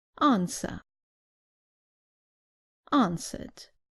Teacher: Remember that in British English, the R at the end is not pronounced